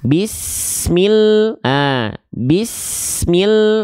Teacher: Jadi mi-nya nggak perlu dipanjang-panjang, panjang-panjangkan, langsung masuk ke huruf yang ada tanda syamsiyah alias tasydidnya.